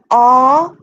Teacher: it is the back of the tongue that is raised very slightly very slightly for ah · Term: back vowels